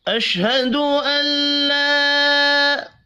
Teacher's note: اشہد ان لا، حرکات کھینچ کر نہیں پڑھی جائیں گی، حمزہ لام زبر ال پڑھا جائے گا، نون ساکن نہیں پڑھا جائے گا، الف کے اوپر چھوٹی مد ہے، تین الف کے برابر کھینچ کر پڑھنا ہے۔